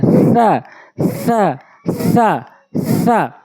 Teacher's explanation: জিহ্বার আগা দাঁতের আগায় সা